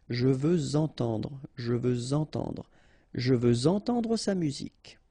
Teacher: Even if we've got this X at the end, well, with the liaison it will sound like Z.